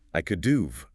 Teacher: The H is often dropped, the vowel reduces to a schwa, and you are left with UV, or just a V sound attached to the previous word. I could have becomes I could do've.